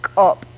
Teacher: English speakers are going to tend to want to say kop with just a K, but this is an ejective type of K, to use a linguistic term. It has that extra little catch